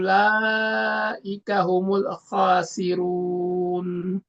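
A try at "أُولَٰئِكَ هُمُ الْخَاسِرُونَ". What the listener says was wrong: Lebih ini lagi di lam sukun ya. Humul ya. Ulaika humul khasirun. Kita tahan dulu sebentar. Jadi tidak terlalu cepat dilepas ya lidahnya Pak ya. Humul kho.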